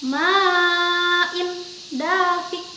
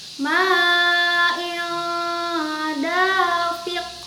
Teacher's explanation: Bukan dibaca ma'in dafik, salah. Tapi huruf yang tanwinnya dibaca samar sesuai dengan pengertian dari ikhfa itu sendiri. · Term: ikhfa hakiki